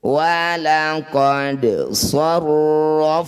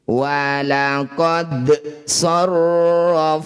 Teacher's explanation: Walaqad sarrafna, dal sukun di tengah bacaan disebut bacaan qalqalah sugro. Bunyi dal pantulkan, pantulannya kecil saja ya, tidak boleh berlebihan